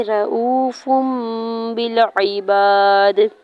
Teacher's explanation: फा के ऊपर दो पेश की तनवीन को मीम में बदलते हुए गुन्ना करेंगे। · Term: इकलाब